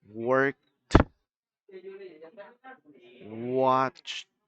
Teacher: Cuando no tenemos esta vibración en el sonido final, básicamente lo que va a hacer es que la pronunciación va a ser como una T.